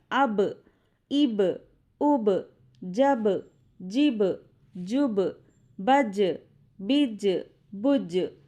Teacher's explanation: حروف قلقلہ 5 ہیں، قاف، طا، با، جیم، دال۔ جب ان پر جزم ہو تو ان کو پڑھتے وقت ان کے مخرج ٹکر کھا کر الگ ہو جاتے ہیں